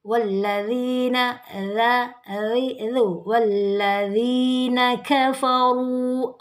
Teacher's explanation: ra dibaca tebal karena dia tanda dhamma.